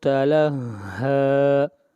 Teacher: ہا کو کھینچ کر پڑھیں گے ایک الف کے برابر، ہا کے اوپر کھڑی زبر ہے۔